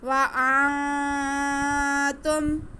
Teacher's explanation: ہم نون ساکن کی آواز کو ناک میں چھپا کے پڑھیں گے